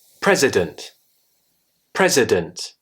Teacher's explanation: The I becomes a schwa sound.